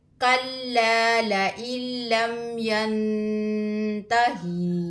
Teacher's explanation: नून साकिन के बाद ता हरूफ इख्फा में से है, यहाँ पर गुन्ना करेंगे